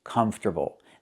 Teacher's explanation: The R is not reduced. It moves after the T.